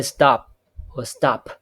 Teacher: unaspirated P and aspirated P are the allophones of the same phoneme. So we can use this representation a phoneme per can be realized as this one or as this one. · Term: free variation